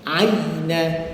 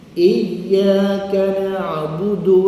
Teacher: Ya makhraj muhaqqaqnya ialah pada tengah lidah. Aina. Macam kita baca surat iyyaka. Maknanya lidah kita menekan ke langit-langit keras.